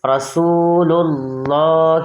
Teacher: جب اللہ تبارک و تعالیٰ کے نام سے پہلے حرف پر زبر ہو یا پیش ہو، اللہ تبارک و تعالیٰ کے لام کو پر پڑھتے ہیں